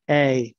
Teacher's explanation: It starts somewhere in the middle for the nucleus and then raises for the glide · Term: raising diphthong